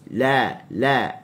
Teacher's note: huruf lam hujung tepi lidah diletakkan di gusi. La, al. Jangan kita baca al.